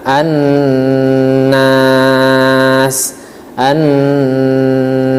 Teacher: dibaca dengan guna yaitu ditahan suara Annas Annas ya dan kurang dua sampai tiga ketukan Annas baik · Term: hukum ghunnah